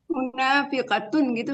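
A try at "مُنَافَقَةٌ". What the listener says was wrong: Fa, munafaqatun. KBPP Bu, kalau KBPP huruf keduanya fathah.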